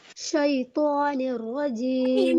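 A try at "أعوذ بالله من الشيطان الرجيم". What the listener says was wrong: منہ کو دبانا نہیں ہے، شیء ایک دم اس میں کریں اسموتھلی.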